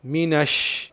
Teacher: مینش، شین ادا کرنے میں بہت سارے لوگوں کو پرابلم ہوتی ہے تو دھیان سے سمجھیں۔ شین ادا کرنے کے لیے زبان کے بیچ کو اوپر کے تالوں پر لگائیں گے اور ایک چیز کا خیال رکھیں گے کہ زبان کی نوک دانتوں پر ٹچ نہیں ہونی چاہیے، صرف زبان کا بیچ اوپر کے تالوں پر لگے گا۔